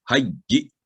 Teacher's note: हज्जी लंबी आवाज नहीं करेंगे, हमजा पर आवाज को रोकेंगे